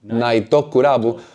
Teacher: there is no tu sound in Japanese. There's only tsu in Japanese, which is why we have naito rather than naitu. Tu doesn't exist in Japanese, so Japanese opts for to when an English word or syllable ends with a T.